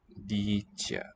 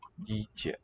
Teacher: Two modified vowels, long E, and the prepalatalized ye.